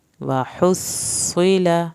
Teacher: ہا کو حلق سے پڑھیں، صاد کی شد پہ دیر لگائیں، صاد کو پر کریں